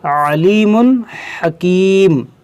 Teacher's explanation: عین کو وسط حلق سے ادا کریں گے اور حا کو بھی وسط حلق سے ادا کریں گے